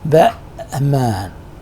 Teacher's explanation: in some speakers' language, this T is not pronounced, and at the point of T, we have a kind of glottal stop